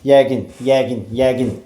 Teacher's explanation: Vurğu gəlir yenə də sonuncu hecanın üzərinə.